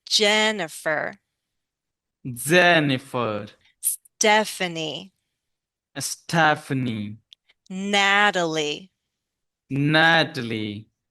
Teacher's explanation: let's also lengthen the first vowel sound because that's what's stressed